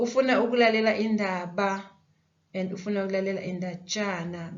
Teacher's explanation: The ba changes to be a ja. Lokhu ke sesikubize ngokuthi ukulwangisa, okay?